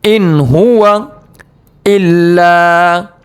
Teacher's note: ان ہوا نون ساکن کے بعد حروف حلقی کے 6 حرفوں میں سے ہا آنے کی وجہ سے نون ساکن کو ظاہر کر کے بغیر گناہ کے جلد پڑھنا ہے. ان ہوا الا، لام کو کھینچیں گے الف مدہ کی وجہ سے، الا ذکر.